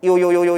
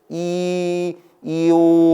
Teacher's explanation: 진짜 끊어서 이오 이렇게 하면 이랑 오지. 근데 이오를 약간 빠르게 한다라는 느낌으로 이오 하면은 뭐다? 이게 결국 요가 된단 말이죠. 그때 이게 뭐라고? 반쪽짜리 반모음이다. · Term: 이중모음